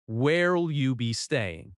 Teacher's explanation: The stress falls on staying.